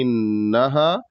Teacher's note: ہا کے بعد الف ہے تو ایک الف کے برابر کھینچنا ہے، بہت زیادہ نہیں کھینچنا ہے